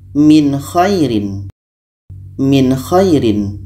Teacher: dibaca jelas Nun jelas Kho jelas dan tidak ada dengung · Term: izhar halq